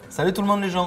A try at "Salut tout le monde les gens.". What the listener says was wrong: Articule. Voilà, parce que les Marseillais, vous prononcez les E, mais par contre, vous articulez pas. Ah, vous parlez vite.